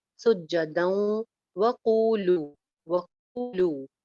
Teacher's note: दाल के ऊपर तनवीन है, तनवीन के बाद वाव है, वाव हरूफ यरमलून में से है, तो यहाँ पे इदगाम के साथ गुन्ना हो जाएगा